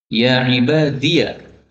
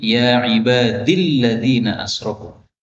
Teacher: ya ibadiyah, ini ya-nya boleh disukun menjadi ya ibadilladzina asrafu